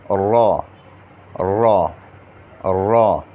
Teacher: زبان کی پشت اور اس کا کنارہ جب ثنایا اور رباعی کے مسوڑوں سے لگے تو یہ حرف ادا ہوتا ہے. ثنایا سامنے والے دانتوں کو کہا جاتا ہے اور رباعی اس کے ساتھ جو 4 دانت ہیں اس کو کہا جاتا ہے.